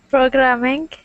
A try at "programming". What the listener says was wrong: pro. Keep that tongue down again. Pro. Really, that R sound will help improve your pronunciation so much.